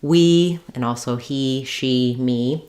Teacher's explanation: it's high in front it's also called tense because it's a vowel that has a certain kind of tension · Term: high front tense vowel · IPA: /i/